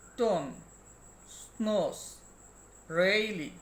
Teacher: the blade or tip and the blade of the tongue articulate the alveolar ridge. অর্থাৎ জিহ্বার ডগা দন্তমূলের নিকটে চলে যায় এই ধরনের সাউন্ডগুলো উচ্চারণ করার সময়।